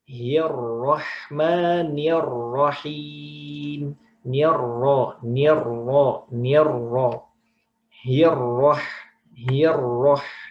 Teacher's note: ro bertasydid di lafadz basmalah itu ro-nya dibaca tebal.